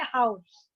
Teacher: जब हम हाउस को जोर से बोल रहे हैं तो डिप्थोंग में आउ हो रहा है